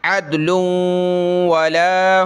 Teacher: لام پہ تنوین ہے تو آگے واو آگے یعنی اس پر تشدید ہے تو ہم نے یہاں ناک میں آواز پیدا کرنی ہے